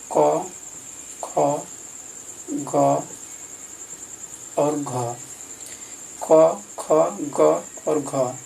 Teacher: इस चारों का उच्चारण स्थान कंठ है